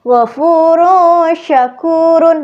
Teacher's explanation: ini ada tanwin bertemu shin, tapi terdengar seperti suara eng. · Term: ikhfa